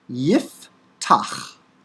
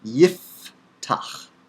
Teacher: The Pei comes after a vowel, And so it's pronounced as an F and is written without a stop.